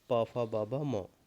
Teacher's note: प वर्ग हमारा ओव्य हो जाएगा